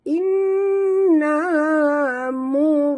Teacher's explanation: Inna. Nun bertasydid. Wajib dengung. Dua harakat. · Mur. Ra itu mati. Huruf sebelumnya baris depan. Kena baca tafkhim tebal.